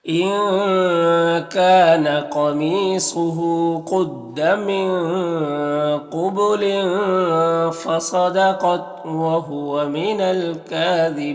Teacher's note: یہاں پر صاد حروف مستعلیہ میں سے، قاف بھی حروف مستعلیہ میں سے، اور یہاں پر الف لام حروف قمری کاف کے شروع میں تو لام کو پڑھیں گے، الف کو نہیں پڑھیں گے۔ کاف میں کھڑا زبر ہے جو الف مدہ کی طرح ہوتا ہے اور یہاں پر وقف کریں گے تو مد عارض وقفی ہوگا